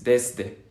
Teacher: Desde, es una S fuerte, más sibilante, más vibrante. En cambio, la que yo hago, y tal vez, y muy posiblemente casi todos ustedes, es una Z, desde, desde.